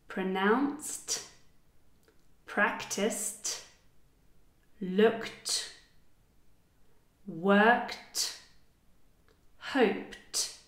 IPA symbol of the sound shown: t